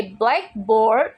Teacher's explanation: when we say blackboard with the stress on the second word, it just means a board that is a black